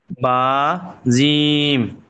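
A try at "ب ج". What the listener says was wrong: বাহ, মাশাল্লাহ ভাই, অনেক সুন্দর পড়েছেন ভাই,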